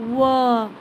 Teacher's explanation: जो ओंठ है हमारा वो भी थोड़ा सा राउंड शेप में आ जाता है ना, और जो जीभ है वो दांत में आके टच करता है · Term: दंतोष्ठ